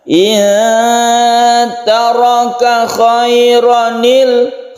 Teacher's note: ro ini menjadi fathah biasa dan tidak panjang